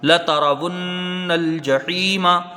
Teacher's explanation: مقدار غنہ ہوگا، نون کو پھر یہاں لام سے ملائیں گے، لام تعریف کا اظہار قمری ہوگا ، جیم کے اوپر زبر ہے جلدی پڑھا جائے گا، ہا